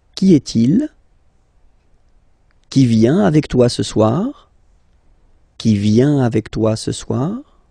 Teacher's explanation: If you pronounce them normally, remember that you will have to raise your voice a little bit at the end of the question.